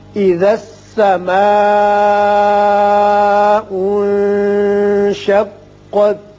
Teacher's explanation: یہاں نون ساکن کے بعد شین ہے جو حروف اخفا میں سے ہے، یہاں نون پر اخفا کریں گے